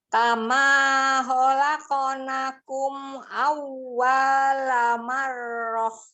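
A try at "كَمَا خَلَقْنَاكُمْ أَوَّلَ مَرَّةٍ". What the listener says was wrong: Kebalik nih, ada yang 2 harokat jadi 1. Khalaqnakum, bukan khalaqnakum. Nanya 2, bukan 1. Awwala, lamnya 1, bukan 2. Jangan dibalik-balik, oke? Awwala marroh langsung, ayo.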